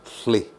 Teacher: your tongue goes to the top of your mouth, and it's kind of the sound goes out the side of your tongue as you drop your tongue, thli.